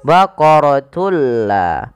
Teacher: Idgham bila gunnah yaitu idgham memasukkan bila gunnah tanpa disertai dengan gunnah. Yang dimaksudkan di sini adalah memasukkan suara tanwin pada lafal baqaratun ke huruf la.